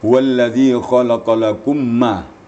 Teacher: Mim mati, mim sukun bertemu mim. Diidghamkan idgham mutamasilan. Idgham mimi, idgham mutamasilan namanya.